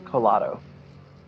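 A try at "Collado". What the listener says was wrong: Well, if you pronounce it American, it's Colado, but the 2 L's make the E sound. No, not ya. Make like the E. Okay, it's not Cayado.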